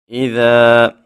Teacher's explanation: حمزہ جہاں پہ بھی آئے حمزہ کو خوب تحقیق سے سختی سے واضح کر کے ادا کرتے ہیں اور ذال میں سیٹی پیدا نہیں کرنی۔ جب الف سے پہلے حرف کے اوپر زبر آ جائے تو الف مدہ ہوتا ہے، الف مدہ کو ہم ایک الف کے برابر لمبا کر کے پڑھتے ہیں۔